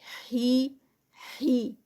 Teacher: مد صلۃ الصغریٰ ہے تو اس کو 2 کاؤنٹس کا تو ٹائم دینا ہے